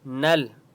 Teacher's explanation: نل نون کو لام کے ساتھ ملائیں گے